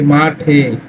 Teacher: পদের শেষে এ ধ্বনি সংবৃত হয়। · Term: সংবৃত উচ্চারণ